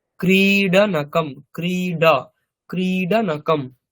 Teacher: বাংলাতে আমরা যেমন উচ্চারণ করি ক্রীড়া, ওই শূন্য র, র এর মতো উচ্চারণ করি, এখানে কিন্তু র নয়, এটা কিন্তু ডকারই উচ্চারণ হবে।